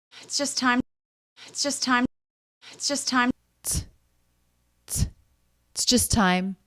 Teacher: the vowel is dropped that's not an uncommon pronunciation